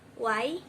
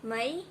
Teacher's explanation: Fonem I termasuk dalam vokal tinggi. Pengucapannya ketika lidah mendekati langit-langit. Apabila pengucapannya terjadi peninggian, maka akan terjadi alur sempit antar lidah dan langit-langit, sehingga terbentuk fonem Y.